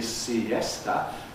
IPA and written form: siˈesta (siesta)